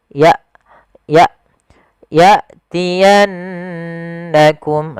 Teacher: Hamzah di sini ada sebuah sifat yang paling mencolok ya ada syiddah dengan jaharnya, yaitu tertahannya nafas dan tertahannya suara. Maka ketika hamzah sukun dijelaskan ya, jangan sampai menyeret, jangan ya tapi ya tiyannakum.